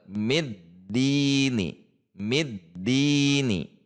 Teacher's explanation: Huruf dal sifatnya tertahan atau syiddah. Maka seolah-olah berhenti. Namun tidak berhenti. Sebetulnya hanya menahan di titik dal.